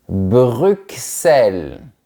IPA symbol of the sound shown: ks